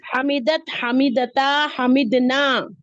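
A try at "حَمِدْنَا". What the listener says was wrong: नून जबर ना है सिर्फ, हमिदना, हमिदना। हाँ, वहां आवाज ऊपर जे नहीं जाएगी, खींचेगी नहीं जी।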